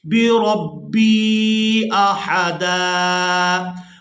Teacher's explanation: وقف کی صورت میں دال پر ایک زبر ادا کریں گے اور اس کو ایک الف مقدار کھینچ کر ادا کریں گے۔